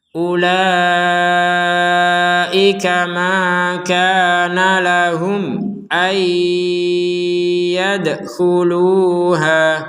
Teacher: Ada mim sukun bertemu dengan huruf hamzah, maka kita membacanya dengan jelas.